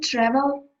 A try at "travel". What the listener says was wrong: Travel, you open mouth too wide. No, travel.